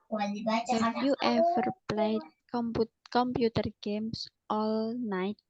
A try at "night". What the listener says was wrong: G-nya masih kedengeran itu.